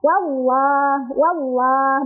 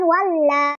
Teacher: tafkhim itu artinya tebal jadi cara bacanya adalah ditebalkan · Di sana ada lafaz Allah atau lam jalalah ya. Lam jalalahnya itu dibaca secara tafkhim. Karena sebelum lafaz Allah atau lam jalalah itu didahului oleh huruf yang berbaris fathah.